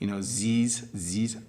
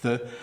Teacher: So I would say your TH sounds, often when people speak English with a French accent, they say, z's